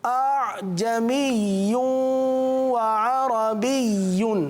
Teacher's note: دوسری جو ادائیگی ہے جس میں دوسرے حمزہ کو ہم نے نرم پڑھا, دوسرے حمزہ کو نرم پڑھا, وہ ادائیگی درست ہے. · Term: تسہیل